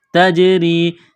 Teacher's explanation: تا کو باریک کرنا ہے، یا ساکن سے پہلے زیر ہے، حروف مدہ یا ہے، ایک الف کے لمٹ میں کھینچنا ہے۔